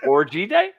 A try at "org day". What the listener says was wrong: Org day. Hey, don't add the Y.